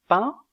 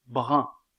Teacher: est arrondi donc la prononciation diffère au niveau de la labialité un de pain est étiré un de brun est arrondi